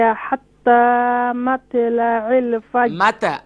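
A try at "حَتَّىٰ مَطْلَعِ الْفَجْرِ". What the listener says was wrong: متى no طا is more full mouth.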